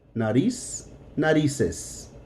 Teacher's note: The C and the Z are going to sound both like an S.